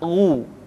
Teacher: Ketika dhammah, baru bibir kita dimonyongkan sehingga keluar vokal u dengan sempurna.